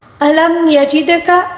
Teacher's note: کاف کو باریک پڑھنا ہوگا · دال کو قلقلے کے ساتھ پڑھنا ہوگا کیونکہ دال کے اوپر ساکن ہے، ٹھیک ہے، اس وجہ سے اس کو ہلا کر پڑھنا ہوگا، یہاں پر قلقلے کا قاعدہ ہے، ٹھیک ہے۔